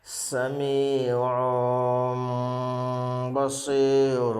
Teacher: دو پیش کی تنوین کو میم سے بدل کر گنہ اخفا کے ساتھ پڑھیں گے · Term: اقلاب